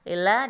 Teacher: Lillah dibaca tipis atau disebut juga dengan tarkik